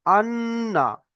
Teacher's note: নুনের উপর যদি তাসদিদ থাকে, তাহলে এক আলিফ পরিমাণ গণনা করে পড়বো।